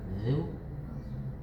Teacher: Coba za-nya lebih tipis, zal. Lidahnya keluar.